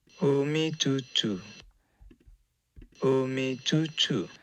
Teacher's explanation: he's got a little bit of aspiration with these T's that, when you listen to it closely, kind of sounds like an affricate, like ch, something like that.